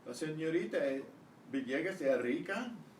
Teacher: It's so hard to say es rica that the S kind of disappears.